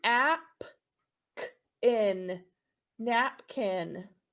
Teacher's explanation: your accent is going to go on the first syllable